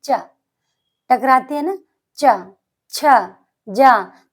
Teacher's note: इनकी तालु ध्वनि जैसे च, छ, ज, झ, य। आप चा को बोलिए, आपकी जिह्वा तालु से टकराएगी। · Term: तालव्य